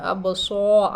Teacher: را کے نیچے زیر ہے، ہم باریک پڑھیں گے